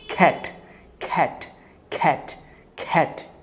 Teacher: আমরা ক্যাট বলবো না, আমরা এটাকে বলবো হচ্ছে খ্যাট, যেহেতু সি ফর খা